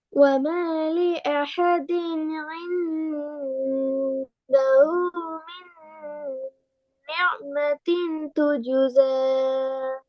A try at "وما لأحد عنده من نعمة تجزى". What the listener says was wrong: நியா என்று வரக்கூடாது. துஜுச எத்தனை செகண்ட் இடணும்? மத்திர அடையாளம் வந்து எசாக்கு மேல.